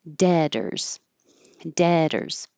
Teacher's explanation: The word debtors, the B is silent, the T changes to a D, and OR always sounds like ER.